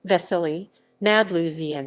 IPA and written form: ˈvɛsɛliː ˈnadluʒɲɪtsiː (Veselí nad Lužnicí)